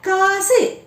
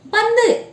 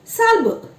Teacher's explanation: ஆறு வல்லின உகரங்களும் ஒரு சொல்லின் இறுதியில் வரும் பொழுது ஒரு மாத்திரைக்கு பதிலாக குறைந்து அரை மாத்திரை அளவிற்கு ஒலிக்கும் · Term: குற்றியல் உகரம்